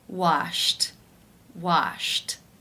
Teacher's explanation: final sound an infinitive form is Shh the unvoiced SH sound since it is unvoiced it is case one where the e D is pronounced as a T